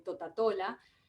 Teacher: vemos que el ápice de la lengua se eleva si es un sonido apical porque el ápice de la lengua · es exclusiva porque hay un cerramiento total del tracto oral después vemos que el velo está elevado es decir que el aire sale por la boca es un sonido oral las cuerdas vocales están en reposo por lo tanto son sonidos